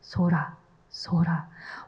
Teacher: with a soft s and a gently rolled R